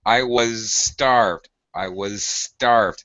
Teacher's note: you have the was z sound followed by that voiceless s.